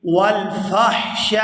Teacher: فا کو حا ساکن کے ساتھ ملائیں گے